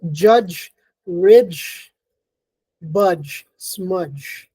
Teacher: Let's start off with the j, which starts off as a plosive d, but is released as a j. So it starts out as a d, but it is released as a fricative. · The j is voiced, it's unaspirated, it's palatal. The blade of the tongue touches the palate, but it's an affricate, so it starts out as a plosive, It's released as a j.